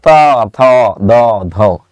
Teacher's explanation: দাঁতকে স্পর্শ করেছে, তাই এটাকে বলে দন্তবর্ণ